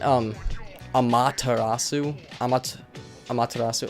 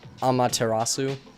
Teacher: I always accented the second syllable